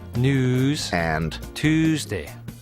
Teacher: now that why sound is gone and it's news and Tuesday